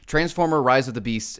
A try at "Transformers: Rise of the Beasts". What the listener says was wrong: You got it wrong again. You said Transformer that time. It's Transformers. Rise of the Beasts.